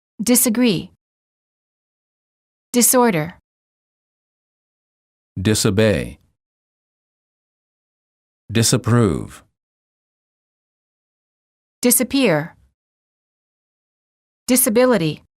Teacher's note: the s in the prefix dis is pronounced as s and not as z